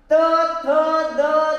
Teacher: आपले जीभ जे आहे ते दात वरच्या दाताच्या टोकाला स्पर्श करते किंवा दाताच्या पाठीमागल्या बाजूला स्पर्श करते, म्हणून हे जे वर्ण आहेत ते दंत्य आहेत। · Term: दंत्य वर्ण